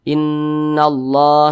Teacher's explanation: huruf lamnya ini dia kan tidak dibaca nih langsung melebur ke huruf lam yang di depannya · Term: Idgham Syamsiyah